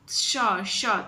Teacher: श ध्वनि का उच्चारण स्थान तालू है